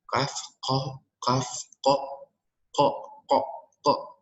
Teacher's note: Jadi qaf dari pangkal paling belakang, kemudian kaf dari pangkal lidah yang di tengah gitu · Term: huruf kaf